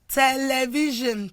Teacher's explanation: Words like television, of course, it is the V that will be stressed.